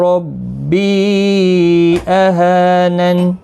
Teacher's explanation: ربی مد منفصل ہے، 3 الف کی مقدار کے برابر کھینچ کر پڑھیں گے۔ ہا الف مدہ ہے، نون ساکن ہوگا وقف کی صورت میں۔